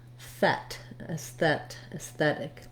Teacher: And again, another red tent vowel, so thet, aesthet, aesthetic. When I use that T in between the two vowel sounds, it actually sounds more like a D. It's a flap T in this case.